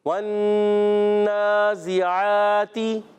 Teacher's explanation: زا کی ادائیگی سیٹی کے ساتھ، سیٹی والے حروف میں سے زا، سین، صاد۔